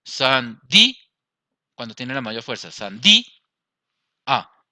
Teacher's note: Vemos que aquí tiene la mayor fuerza en la vocal cerrada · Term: hiato